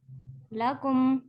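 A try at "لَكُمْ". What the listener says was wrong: नहीं अभी आप लाकुम कह रही हैं, लाकुम नहीं है, लकुम।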